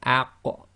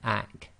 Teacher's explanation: The only one, or the only difference, is the qaf is tafkhim, and you have that blocking of the throat